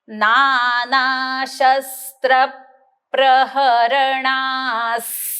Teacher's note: स्त्र म्हटल्यानंतर मी ओठ बंद करणार आहे आणि ना नंतर दातावर दात मागन जीभ रेटायची आणि श्वास सोडायचा